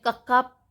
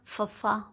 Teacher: ਜਿਹੜੇ ਵਿਅੰਜਨਾਂ ਦੇ ਉਚਾਰਨ ਸਮੇਂ ਜ਼ਿਆਦਾ ਮਾਤਰਾ ਵਿੱਚ ਸਾਹ ਬਾਹਰ ਨਿਕਲੇ, ਉਹ ਮਹਾਪ੍ਰਾਣ ਵਿਅੰਜਨ ਹੁੰਦੇ ਹਨ